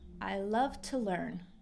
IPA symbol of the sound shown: tə